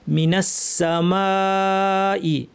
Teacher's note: এক আলিফের পর একই শব্দে হামজা, মাদ মুত্তাসিল 2 আলিফ